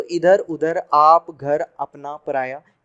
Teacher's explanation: अब निर्नुनासिक का मतलब नील, यानी इसमें न नाक का प्रयोग होगा न मुंह का प्रयोग, केवल मुंह से बोला जाएगा, नाक बिल्कुल टच ही नहीं है उसमें।